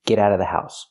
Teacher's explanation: you don't have to pronounce the vv sound in of because it's before a consonant